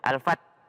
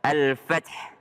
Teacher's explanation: Jadi jangan juga al-Fat enggak kedengaran H-nya ada Al-Fath. Ada H-nya di belakang.